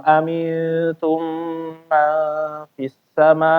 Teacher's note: setelah i enggak ada yang bikin panjang jadi jangan dipanjangin